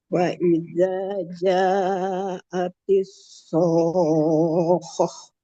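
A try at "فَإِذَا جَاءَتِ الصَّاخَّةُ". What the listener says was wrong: Khoknya ngalir dulu suara nya. Ja-nya 4, 6, so-nya 6, panjangin lagi sedikit.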